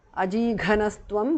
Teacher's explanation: Visarga changes to su there. Tvam. Ajighanastvam because of sandhi.